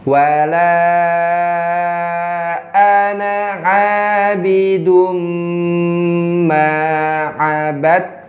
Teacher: Tadi dal sukun ketemu ta tasdid Dalnya nggak berlaku. Nggak berlaku. Langsung ke Ketanya. Namanya ini bacaan idgham. · Jadi hilang kol-kolannya, bukan ngabadatum tapi ngabadtum. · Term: idgham mutajanisai